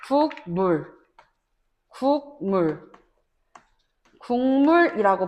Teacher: 기억 받침이 이응이 되는 것이죠. 이응. 그래서 국물 국물 국물이라고 발음합니다.